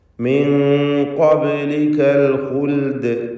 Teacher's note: ബാഹിൻ്റെ സുക്കൂൻ ഖൽഖല സുഗ്റ നൽകി ശബ്ദം ഹറക്കത്ത് പോലെ ചലിപ്പിക്കണം